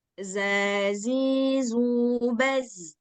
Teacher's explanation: Ujung lidah bertemu dengan gigi geraham atas dan bawah. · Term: zai